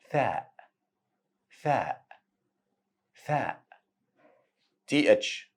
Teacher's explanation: voiceless th sound as you don't use the vocal cords while saying it